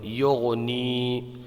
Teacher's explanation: یہاں پر یا میں مدہ ہوگا ایک الف کھینچ کے پڑھیں گے